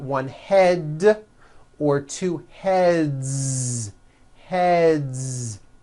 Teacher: the word head ends with a voiced d d d so we've got one head or two heads Heads